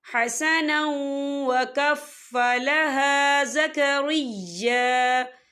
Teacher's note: یہاں پر ادغام ہوگا، تھوڑا سا غننے کے ساتھ پڑھیں گے